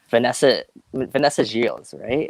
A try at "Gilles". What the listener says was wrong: I think it's Gilles without the S for the French pronunciation.